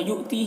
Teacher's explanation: حمزہ ساکنہ ہے، واو کی شکل میں جھٹکا لگے گا۔ تی میں یا مدہ ہے ایک الف کے برابر کھینچیں گے۔